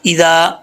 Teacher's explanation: ایک اور بات یاد رکھیے گا کہ ذال کے اندر سیٹی نہیں ہوتی. اکثر لوگ پڑھتے ہیں اذا پڑھ جاتے ہیں، یہ مسٹیک ہے.